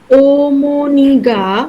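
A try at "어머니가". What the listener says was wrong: ও না, অ।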